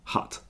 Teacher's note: if you want to say Hut with a u you relax your face a little bit more and your tongue moves back a tiny amount